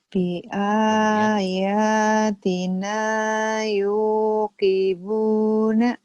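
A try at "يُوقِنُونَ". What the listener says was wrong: Titiknya di mana? Tadi kan tahu ya, ini di bawah ya, tahu ya. Tadi ayatina tahu di atas. Matanya mungkin udah tahu kenapa mulutnya jadi Yukibuna. Yukinu ya, titiknya di atas.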